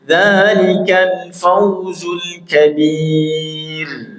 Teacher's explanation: ra al-kabir didahului kasrah atau ya sukun, ra-nya terkik tipis ya